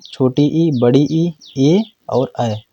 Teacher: का भाग कार्य करता है जब हम उच्चारण करते हैं तो इसमें जीव का क्या है आगे का भाग कार्य करता है यानी अग्र भाग कार्य करता है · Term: अग्र स्वर, अग्रस्वर